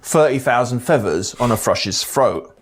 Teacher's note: cabill to become the main working class accent of the southeast th fronting results in the th sound in other dialects being replaced by a f sound · TH fronting results in the th sound in other dialects being replaced by a f sound, 30,000 feathers on a thrush's throat, and the sound coming out as v, but only in the middle of words and at the end.